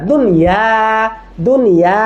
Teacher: নুন সাকিন তানবিনের পরে ওয়াও বা ইয়া থাকা সত্ত্বেও সর্বদাই ইজহার বা স্পষ্ট উচ্চারণ করতে হবে। এখানে কি ঈদগাম গুন্না কিছুই করা যাবে না, ঠিক আছে? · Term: ইজহারে মুতলাক